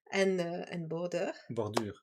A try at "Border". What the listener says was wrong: Bordure. If you say it with the rolling R, it sounds like you have a southern Dutch accent. A little like Belgian almost.